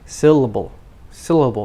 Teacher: the first one the stressed syllable is much longer than the others